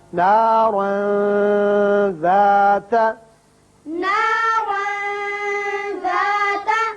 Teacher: تنوین کے بعد حروف اخفا میں سے ذال ہے، لہذا یہاں تنوین کے نون پر اخفا ہوگا۔